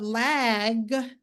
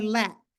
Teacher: in AAE, the b, d, and g sound can be devoiced, rendering a p, t, and k sound. So instead of lag, they may say lack, where that g, and k is the same mouth movement.